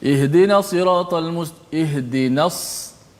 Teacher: ihdinas dia akan keluar semburat desiran suara